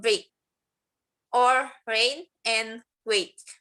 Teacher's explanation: tongue in front of the mouth with the jaw half open saying A, and then closing saying E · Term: diphthong